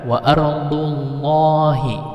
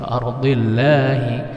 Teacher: Lam tafkhim, lam yang dibaca tebal, lam tafkhim atau taglis sama.